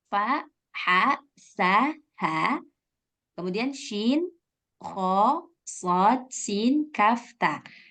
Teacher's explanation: yaitu pengucapan salah satu huruf ijaiah disertai dengan keluarnya nafas Nah jadi ada nafas yang keluar ketika menyebutkan huruf hams ini